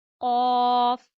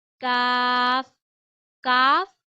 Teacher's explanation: कौफ काफ काफ और कौफ में फर्क यह है दो नुक्तों वाला कौफ आप हमेशा मोटा पढ़ते हैं। यह वाला काफ आप बारीक अदा करते हैं और आप इसे जबान की जड़ से ही अदा करते हैं।